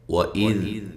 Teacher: وَإِذْ، حمزہ کو تحقیق کے ساتھ، ذال کو نرم ادا کرنا ہے، ہلانا نہیں